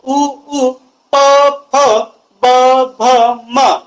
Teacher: त्यानंतर उ उ प फ ब भ म यांचा जेव्हा मी प्रॅक्टिकली उच्चार करून पाहतो त्यावेळेस ओठांचा वापर मोठ्या प्रमाणात होतो, त्यामुळे त्यांना ओष्ठ्यवर्ण असं म्हटल्या जाते